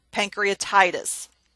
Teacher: little bit more emphasis on that part and then the then the medical term pancreatitis the ty is emphasized · the medical term pancreatitis, the tie is emphasized, pancreatitis.